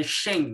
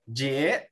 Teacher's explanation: Então, não é shen, né? Não é aquele tom 4 tom, é chan, né? Chan subindo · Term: segundo tom